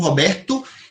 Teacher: E isto é o grande desafio dos brasileiros. Porque nós, a última vogal das palavras, a gente sempre levanta um pouquinho e ela perde a sonoridade.